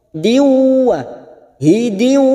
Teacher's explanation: Ada kasrotain atau kasrot tanwin yang bertemu waw, namanya bacaan idgham bi gunnah, masuk dan mendengung, siap masuk pada huruf waw.